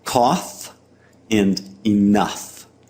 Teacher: a voiceless labiodental fricative, a rasp between the teeth and lips that now sounds like an F sound in words like cough and enough.